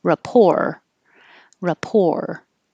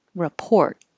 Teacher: rapport sounds almost exactly the same because we're not saying the t at the end at all